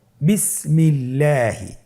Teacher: আপনারা স্ক্রিনে দেখতে পাচ্ছেন একটি উদাহরণ দেওয়া আছে বিসমিল্লাহি আল্লাহ শব্দের দ্বিতীয় লামের আগে এখানে জের এসেছে আপনার জের দেখতে পাচ্ছেন এজন্যে আল্লাহ শব্দের দ্বিতীয় লামটিকে বারিক করে পাতলা করে পড়তে হবে